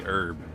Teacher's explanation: For me, the H is silent. Always has been, always will be. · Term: silent H's